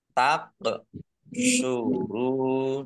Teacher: qaf sukun bacaan kolkolah dibaca memantul ditampakkan pantulannya